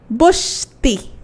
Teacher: একটা অ আছে, কিন্তু হয়ে গেল কি বস্তি, তার মানে এই অটা কি পেয়েছে, লোপ পাচ্ছে। তাহলে এই অটা যেহেতু লোপ পাচ্ছে, অ কি, ও একটা স্বরধ্বনি না, তাহলে এটাকে আমরা বলছি স্বরলোপ।